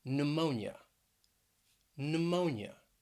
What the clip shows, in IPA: nʊˈmoʊn yə